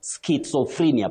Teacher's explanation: That E takes what we call the long front high sound E, not E. You say frenia, not frenia.